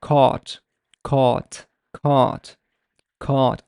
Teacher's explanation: the au is basically velarized. Caught, caught, caught, caught.